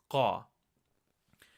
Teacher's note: Instead of saying Ka, you're going to produce that Ka sound, but further down from your vocal cords. It's almost like a glottal stop to say Qa.